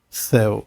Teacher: A gente já aprendeu que quando o vier desenhado como um W, ele é uma semivogal. Então aqui, eu começo com uma vogal e depois vou para uma semivogal. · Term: ditongo decrescente